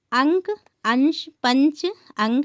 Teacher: तो यहाँ देखिए कि अनुस्वार एक व्यंजन ध्वनि है। इसके उच्चारण में नाक से अधिक सांस निकलती है और मुख से कम।